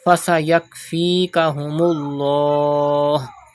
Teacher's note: Pronounce the lam of Allah's name with thicker voice because there is pesh before it.